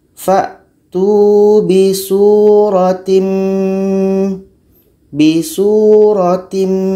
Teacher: Kita masukkan secara sempurna. Tanwin masuk kepada mim. Maknanya hanya terdengar huruf mim saja. · Tanwin ini hilang, masuk kepada mim. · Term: idgham kamil